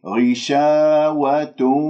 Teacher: الغين طبعا مكسورة مفخمة مرتبة أخيرة